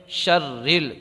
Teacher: را کو باریک پڑھیں گے، شرل، کیونکہ را پر زیر یا دو زیر ہوں تو را کو باریک پڑھیں، تو باریک پڑھنے کی صورت ہے۔